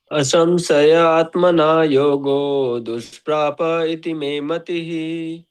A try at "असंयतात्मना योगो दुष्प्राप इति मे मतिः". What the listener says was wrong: No, it is not asamshaya. It is asamyatatmana. असंयतात्मना योगो दुष्प्राप इति मे मतिः.